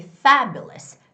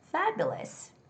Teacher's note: So it's fabulous. And the stress goes on the first syllable